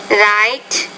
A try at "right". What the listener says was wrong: A little bit of trouble with the R sound, so right, rear, rugged